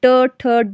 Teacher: ट जब हम बोल रहे हैं तो जीभ ऊपर टच हो रही है, लेकिन मुड़कर जो है जीभ ऊपर टच हो रही है, ट ठ ड, देखो मुड़कर जो है जीभ ऊपर को टच हो रही है, ये आपका मूर्धन्य होता है।